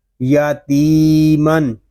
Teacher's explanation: یہاں تا کو ہم ایک الف تک کھینچ کر پڑھیں گے کیونکہ یہاں یا مدہ ہو رہا ہے